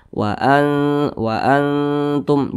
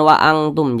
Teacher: ikhfa Hakiki dan huruf ta tergolong kepada ikhfa Hakiki aqrab maka cara bacanya itu disamarkan kemudian juga didengungkan akan tetapi dia kadar samarnya itu dia lebih tinggi jadi lebih condong berbunyi n akan tetapi disamarkan · Akan tetapi dia kadar samarnya itu dia lebih tinggi, jadi lebih condong berbunyi n, akan tetapi disamarkan. Wa antum, jangan wa angtum, jangan.